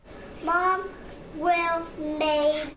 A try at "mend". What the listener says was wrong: Not made. What's the E say? Mend.